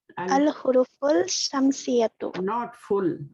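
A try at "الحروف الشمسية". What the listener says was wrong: not full. because sheen letter is shamsi letter. So al-hurufush shamsiyatu. We will merge fa into sheen. We will skip the lam.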